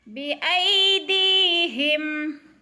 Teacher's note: بایدیہم، اور دی کو کھینچنا ہے اس لیے کہ یا ساکن سے پہلے دال کے نیچے زیر ہے تو یا مدہ ہو رہا ہے، تھوڑا سا لمبا کر کے پڑھنا ہے، یعنی ایک الف کے برابر